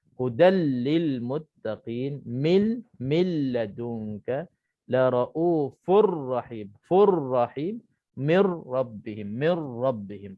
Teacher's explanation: Terus kita masuk dalam ra, hilang terus nun, hilang terus tanwin. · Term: idgham bila ghunnah